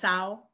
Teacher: Sao is from santo, and the n disappears and the vowel is just nasalized